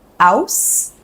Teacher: Cockney is known for dropping the H's at the beginning of the word.